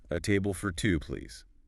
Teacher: Listen to the polite upward tone.